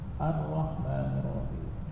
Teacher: Takrirnya di ikhfa, disamarkan.